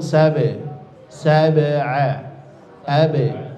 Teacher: jangan ada hamzahnya ya, cukup pantulan di makhrajnya saja di syafatain. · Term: huruf ba